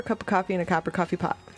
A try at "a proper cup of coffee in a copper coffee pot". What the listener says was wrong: You said coffer copy pot. First time you said coffer pop something else. I heard coffer.